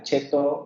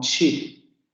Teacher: Africada postalveolar sorda es la consonante que tenemos en español, la de cheto, etcétera, y la tendríamos en palabras como chip.